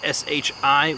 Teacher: shi with a fourth tone which is a down tone so it starts high and goes low